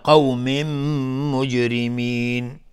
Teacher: تنوین بعدش میم ادغام با غنه. جیم اینجا قلقله میخواد و را ترقیق است چون کسره داره.